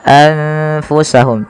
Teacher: maka nunnya disamarkan kepada huruf Fa maka menjadi anfusahum tidak lagi dengan jelas suara nunnya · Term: Ikhfa, ikhfa